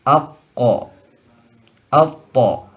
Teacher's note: huruf qaf dan to ini disifati dengan sifat isti'la, maka si lidah akan ada di atas.